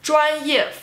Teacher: First tone, fourth tone.